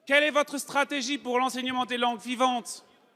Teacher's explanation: Les voyelles sont prononcées de façon très distincte et les R sont roulés. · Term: l'accent alsacien